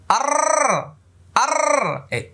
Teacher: ওকে, এবার লক্ষ্য করুন, এটা হলো র, এটা উচ্চারণে মোটা হবে, আর মাখরাজ হলো 10 নম্বর মাখরাজ। দেখেন জিব্বার আগার পিঠ তার বরাবর উপরে তালুর সঙ্গে লাগে,